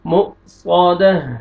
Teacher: صا دال زبر دا م صاد تا دو پیشتن م صادتن وقف کی صورت میں تا کو ہمیں چینج کریں گے ہا کی مجزم آ جائے گی دال زبر ہا جزم دال زبر ہا جزم دہ م صادہ